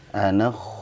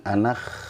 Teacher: kha sukun ketika diawali fathah ya, diawali fathah atau dhammah itu dibacanya tebal